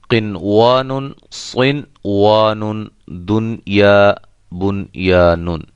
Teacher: یہ جو 4 کلمات ہیں یہ ادغام والے قاعدہ سے مستثنا ہے، یعنی کہ الگ ہیں ، اس پہ ادغام کا قاعدہ جو ہے وہ فٹ نہیں